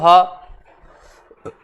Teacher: हा का उच्चारण स्थल होता है कंठ से, गले से।